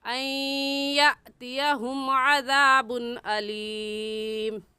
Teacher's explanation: यातियहुम के हमज़ा साकिन है और हमज़ा साकिन पर हल्का सा झटका देते हैं